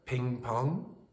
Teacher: your tongue is higher in the mouth when you say the vowel in the first word and lower in the mouth for the second · Ping has a high vowel and pong has a lower vowel. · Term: abote reduplication